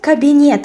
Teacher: so in Russian the stress falls on the last syllable